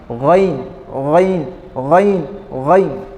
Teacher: غین کا مخرج جو ہے حلق کے اوپری حصے سے جو ہے غین ادا ہوتا ہے۔